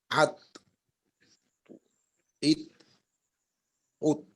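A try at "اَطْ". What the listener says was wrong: হ্যাঁ এখানে তো কলকলা করতে হবে তো কলকলা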